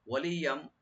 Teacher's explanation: এখানে ইয়ার উপর যে তানবিন আছে এখানে ইদগাম উইথ গুন্না হবে মিমের সাথে।